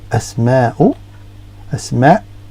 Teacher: you can see there's a slight gap, the hiccup, like the pause I have in the middle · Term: glottal stop